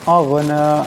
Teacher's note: মা, এখানে মিমের উপর মজা, সেটাকে অবশ্যই লম্বা করে পড়তে হবে। আগনা, এখানে গান সাকিন, গানকে মোটা আওয়াজে উচ্চারণ করতে হবে।